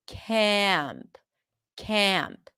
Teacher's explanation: it does tend to be a bit more nasal before a nasal sound.